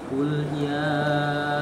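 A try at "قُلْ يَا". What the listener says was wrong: Jangan dipisah, Pak. Jangan kul ya. Qul ya.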